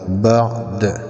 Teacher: یہ دال حروف قلقلہ میں سے ہے، وقف میں ہم اس کو خود ساکن کر رہے ہیں تو قلقلہ ہوگا۔